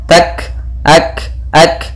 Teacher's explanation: ada kaf berharakat sukun, yaitu ada sifat hamas yang harus ditampakkan.